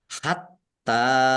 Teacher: taknya dibaca double, ada tasdidnya, ditekan